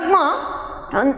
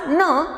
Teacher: आपल्या मुखातून हवा बाहेर पडते, परंतु काही अंशी हवा नासिकाविवरातून सुद्धा बाहेर पडते. आणि त्यामुळे या ध्वनींचा उच्चार हा काहीसा नाकातून केल्यासारखा होतो, आणि म्हणून या ध्वनींना अनुनासिक असं म्हटलं जातं.